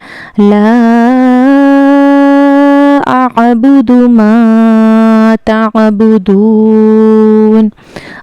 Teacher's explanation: First word ला इसका जो मदद है इसको भी हमने दो से चार अलिफ के बराबर खींच कर पढ़ना है।